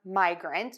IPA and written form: maɪgrənt, (migrant)